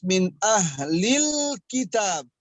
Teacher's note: Kemudian yang perlu diperhatikan adalah membaca lam sukun ya. Jangan sampai lam sukunnya kita membaca dengan qalqalah